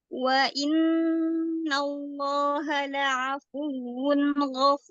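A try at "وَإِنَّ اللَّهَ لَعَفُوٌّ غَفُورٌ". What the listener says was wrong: Wawnya terlalu panjang. Wa in langsung. Wa innallaha.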